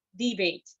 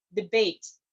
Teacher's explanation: say say debate but if it's a verb you say debate the stress changes from the first syllable into the second syllable if you're using it as a verb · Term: primary stress